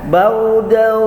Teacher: gunah harus ditahan di hidung 2 ketuk sampai 3 ketuk